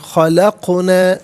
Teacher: خلقنا میں قاف ساکن ہے لیکن حرف قلقلہ ہے تو آواز لوٹتی بھی محسوس ہونی چاہیے، خلقنا نہیں، خلقنا۔